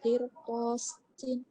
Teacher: Ya, lafaz qirtasin, ro-nya dibaca tafhim.